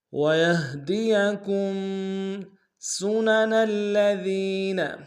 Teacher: سین کی سیٹی باریک ہوگی